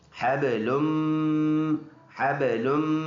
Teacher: دونوں ہونٹوں کو زبر زور کے ساتھ لگائیں گے اور ناک میں آواز جائے گی · با میں قلقلہ ہوگا، لام اور میم کو ملائیں گے شد کی وجہ سے، اور میم مشدد اور نون مشدد میں ہر حال میں غنہ ہوتا ہے. ناک میں آواز لے کے جائیں گے